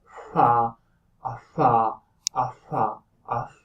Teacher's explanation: So you go like, and that would be the consonant. So it's similar to an F, but it is made with both lips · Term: bilabial fricatives